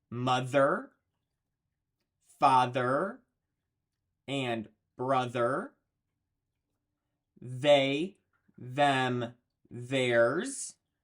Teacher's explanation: the voiced th sound your throat is vibrating you can feel it in your throat